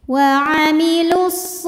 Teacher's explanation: karena pada Shad tasydid ini ada Shad sukun dan sad fathahnya sukun bertemu sukun tidak bisa dibaca sehingga sukun pertama dilepaskan Jadi lamnya pendek